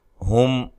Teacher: میم ساکن کا اظہار ہے، غنہ نہیں کریں گے۔